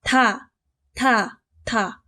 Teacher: 발음되나요 다 윗입몸이 바로 뒤에 있는 위딘 몸의 혀가 닿아서 발음되죠 그래서 디귿은 잇몸 소리 그 중에서도 예사 소리에 옵니다 · 이 바로 뒤에 있는 윗잇몸에 혀가 닿아서 발음되죠.